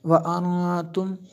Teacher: یہاں پہ جو ہے اخفا ہوا، نون ساکن کے بعد تا حروف اخفا میں سے ہے۔